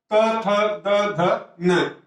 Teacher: इनका उच्चारण स्थान किससे होता है दंत से